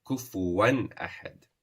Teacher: You do not stretch on the tanween or the nun sukun. You just show the rule of idhar.